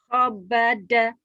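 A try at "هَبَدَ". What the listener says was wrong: Habada Bu. Gak ada titiknya Bu. Habada Bu.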